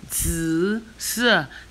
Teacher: Zi is the third tone. Si is the fourth tone.